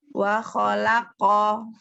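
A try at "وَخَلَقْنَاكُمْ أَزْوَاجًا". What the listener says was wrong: Tapi langsung jangan berhenti. Wa khalaqnakum azwaja. Wa khalaqnakum. Jangan wa khalaq, jangan wa khalaq, jangan wa khalaqo, wa khalaqo.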